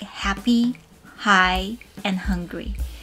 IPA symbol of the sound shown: h